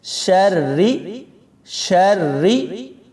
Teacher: شین کو را کے ساتھ ملاتے ہوئے موٹا نہیں پڑھنا، باریک پڑھیں گے، لوگ یہاں موٹا پڑھ دیتے ہیں۔